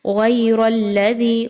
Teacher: غین اور را دونوں کو موٹا کر کے پڑھیں گے